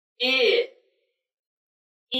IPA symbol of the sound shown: ɪ